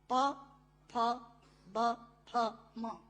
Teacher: दोनों होंठ मिलाकर बोले जा सकते हैं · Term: ओष्ठांग